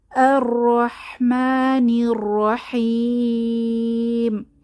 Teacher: জিহবার আগা সামনের উপরের দাঁতের পেছনের অংশে টাচ লাগে এবং জিহবার আগাটা কেঁপে ওঠে। এটাই হচ্ছে তাকরীর বা তাকরার। · তবে আমাদের মনে রাখতে হবে একবারই আমাদের কেঁপে উঠতে হবে জিহবাটা, তাহলেই তাকরারের উচ্চারণটা ঠিক হবে।